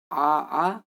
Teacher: देखिए जीभ कहीं नहीं चढ़, सिर्फ कंठ से आपकी आवाज आ रही है, इसलिए इसका उच्चारण स्थान कंठ होता है।